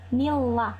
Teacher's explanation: Jadi nun sukunnya tidak dibaca tapi langsung masuk ke huruf selanjutnya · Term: idgham bila gunnah